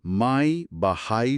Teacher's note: মাই বা হাই শব্দের আই ধ্বনি। এর চিহ্ন হল এ আই, যেখানে এ এবং আই সাউন্ড দুটো জুড়ে গেছে। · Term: যুগ্ম স্বরধ্বনি